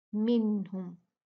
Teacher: उसको पढ़ेंगे, देखेंगे उसके आगे कौन सा हर्फ है, हा है। जब भी नून साकिन तनवीन के बाद हा आता है तो हम नून को साफ पढ़ देते हैं, उसका इजहार कर देते हैं।